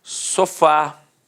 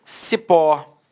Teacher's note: Repare que a sílaba tônica é a última e é terminada de fato em A. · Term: oxítona